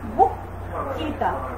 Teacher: রিকারের সংক্ষিপ্ত রূপ হচ্ছে রিকার, রিয়ের সংক্ষিপ্ত রূপ রিকার। তাহলে আদ্য অয়ের পরের ধ্বনিতে যদি রিকার থাকে, তাহলে অয়ের উচ্চারণ অয়ের মতো না হয়ে কিসের মতো হয়ে যাবে, ওয়ের মতো হয়ে যাবে।